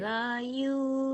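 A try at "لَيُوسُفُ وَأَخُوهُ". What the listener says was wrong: Lanya pendek. La Yusufu. Lanya pendek.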